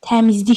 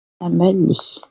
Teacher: D-nin kar qarşılığı, yəni T ilə başlayır və Y-nin kar qarşılığı X səsi ilə bitir.